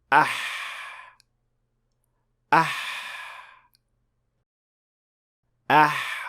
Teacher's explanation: with ha you'll be pushing air out the friction of that air passing through the small opening generates the ha sound